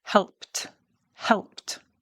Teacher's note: Because it ends in a P, the P is voiceless.